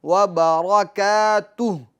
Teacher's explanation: ورحمۃ اللہ وبرکاتہ، وبرکاتہ، وبر را ساکن نہیں ہے، را کو ظاہر کرنا اس کی حرکت کو، وبرکاتہ، اور ہا کی آواز ساکن کی ہے واضح ہونی چاہیے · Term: ہا کے سکون